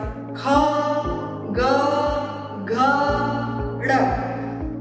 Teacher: तो ये सारे कंठ वर्ण होते हैं। इनका उच्चारण करने में हमारी जीवा कंठ का स्पर्श करती है।